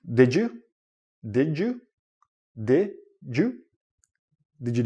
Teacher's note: when you're connecting words and you have a d and a y together it becomes like a j sound